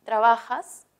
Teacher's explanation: la mayor fuerza de voz está en va